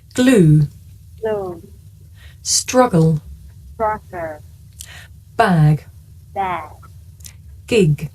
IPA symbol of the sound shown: g